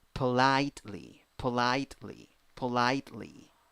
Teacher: The second syllable is the stressed syllable.